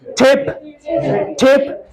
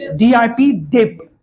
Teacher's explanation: aspiration देखो, extra puff of air